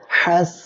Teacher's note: এখানে কেউ যেন সেন উচ্চারণ করবেন না এটা বলতে হবে হাস আর হা অক্ষরটা হামসের অক্ষর বাতাস চালু রাখবেন